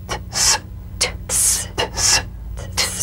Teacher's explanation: The unvoiced tongue point plus blade consonant. Press the tongue against the upper gum ridge for the T drum beat, then crash through with a sharp, soft S.